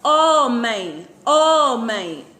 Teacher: homem é uma palavra paroxítona porque acentuação tônica cai na penúltima